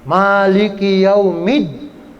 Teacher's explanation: Jadi alnya nggak kedengeran, nggak ada suara huruf lamnya gitu ya. Itu namanya al-syamsiyah.